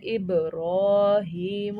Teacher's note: را پہ بھی کھڑی زبر ہے، اسے ایک الف کے برابر کھینچیں گے · جو با ہے وہ ہمارا قلقلہ والا حرف ہے، تو اس کو ہم نے دبا کے پڑھنا ہے